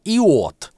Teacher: Если мы растягиваем этот «й» в полноценное «и», то получает «и от»